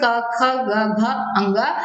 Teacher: ये सभी 5 वर्ण क वर्ग के हैं और इनका उच्चारण स्थान क्या होता है, कंठ होता है।